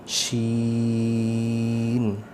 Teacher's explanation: شین کی آواز بھی تھوڑی سی لمبی ہوگی, اس کو مد کر کے پڑھنا ہے